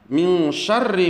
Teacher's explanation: Bunyi ikhfa itu adalah dengung seolah-olah berbunyi eng.